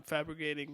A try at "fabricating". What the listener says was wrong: Fabricating? So you said fabricating with a G.